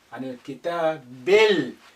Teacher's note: Again, this alif is silent because it's not at the beginning. The lam retains its sukun because the kaf is a moon letter, it's not a sun letter.